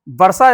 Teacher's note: वर्षा में जो सो बोले हैं वो भी मूर्धा के सहायता से बोला